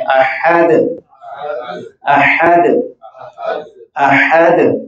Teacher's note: हा को हलक से अदा करते हो और दाल में कलकला करेंगे वक्त की हालत में